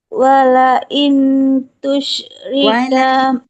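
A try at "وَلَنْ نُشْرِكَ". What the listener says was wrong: Bukan walain. Walan nusyrika.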